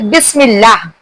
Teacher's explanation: बा की आवाज दोनों होठों से निकलती है।